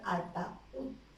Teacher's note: ¿dónde cae la mayor fuerza de voz? En la vocal U. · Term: hiato acentual